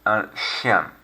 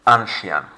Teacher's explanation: focusing here on the sh sound as opposed to ch